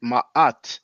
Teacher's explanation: That's why I pronounce it ma'at, because we have two ah sounds. We have the aleph sound and the ain, the glottal ah. So that's why I always tell people, don't pronounce it, please don't pronounce it mayat, because there's no y, and try to pronounce it ma'at or ma'at, but try not to say mat, you know.